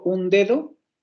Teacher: esa primera alveolar se va a hacer como fricativa. En lugar de decir un dedo, voy a decir un dedo, por la estructura silábica.